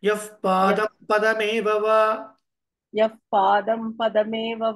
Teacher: పాదం పదమేవ యఫ్ పాదం పదమేవ అంటే మనకు వ్యాకరణం ప్రకారంగా ఏంటంటే ఉచ్చారణలో నిరుక్తం ప్రకారంగా విసర్గ తర్వాత మనకు ప వచ్చినప్పుడు అది ఫ లాగా మనం అన్నమాట